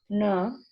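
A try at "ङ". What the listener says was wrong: Nasal. Throat plus nasal. Na. So you have difficulty in uttering this nasal. Na is guttural plus nasal.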